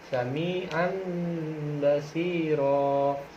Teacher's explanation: itu pun tanwinnya dihilangkan dan diganti menjadi huruf mim